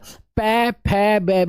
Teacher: आप प फे ब भ जब इसको बोलेंगे ना सर प फे बे ब तो होट लगेंगे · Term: ओट ध्वनि